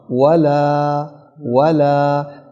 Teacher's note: یہ جو واو ہے نا، اس کو دونوں ہونٹوں کی گولائی سے نکالنا ہے